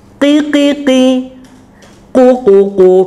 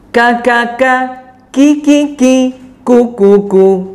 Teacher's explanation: Berbeda antara qaf dan kaf, kedalaman makhrajnya.